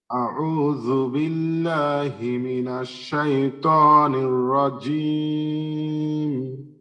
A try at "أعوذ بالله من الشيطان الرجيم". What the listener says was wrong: আর এই যে মোটা আছে দুইটা, ত এবং নির, এখানে আর একটু মোটা করতে পারলে আরো সুন্দর হবে ইনশাআল্লাহ।